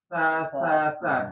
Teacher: Jadi, lidahnya harus dikeluarkan sedikit. Sa sa harus ada gesekan ya.